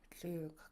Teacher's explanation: you're gonna make a Lingit L, so it's unvoiced. You just breathe it out the sides of your tongue. The other things you'll do to make a specific Lingit L is relax your cheeks a little bit right here.